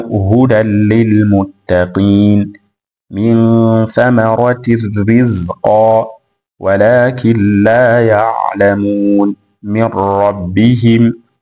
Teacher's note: wamesoma kwa idgham, yani wameingiza katika herufi ya al-lam na herufi ya ar-ra pasina ya ghunna